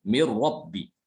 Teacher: Nunnya hilang. Karena nunnya itu diidghamkan ke huruf ro. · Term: idgham kamil